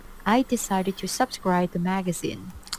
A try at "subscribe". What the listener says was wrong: Now she puts the stress on the first syllable, subscribe. But it's not subscribe, it's subscribe. Subscribe. She puts the stress on the wrong syllable. The stress on the stress is on the second syllable. Subscribe.